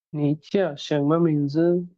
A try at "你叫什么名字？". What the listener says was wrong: 叫টাকে clear করে বলতে হবে, 你叫什 আহা, 叫এভাবে হবে না, 叫মানে আরেকটু সফট করে বাট ফলিং টোন হবে, 叫।